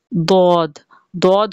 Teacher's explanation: जबान के जो दोनों साइड हैं उनको हम ऊपर दाढ से ऊपर की जो दाड़े हैं उनसे लगाएंगे उनसे टकराएंगे तो दद अदा होगा दद दद हुरूफ मुस्ता दिया में से है इसे हम मोटा · جب زبان کا دایاں کنارہ یا دایاں کنارہ اور بایاں کنارہ دونوں اوپر کی دونوں داڑوں سے ٹکرائیں، یا صرف دایاں کنارہ یا بایاں کنارہ اوپر کی داڑوں سے لگے تو یہاں سے دود ادا ہوتا ہے، یعنی کہ زبان کی جو دونوں سائڈیں ہیں ان کو ہم اوپر داڑوں سے، اوپر کی جو داڑیں ہیں ان سے لگائیں گے، ان سے ٹکرائیں گے تو دود ادا ہوگا۔